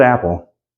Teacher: English you're just not aware of it say the word Apple notice when you say it you got a kind of little catch in your throat at the beginning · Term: glottal stop